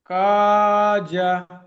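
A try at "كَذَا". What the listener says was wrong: কাজা, সেকেন্ডটা টান আছে।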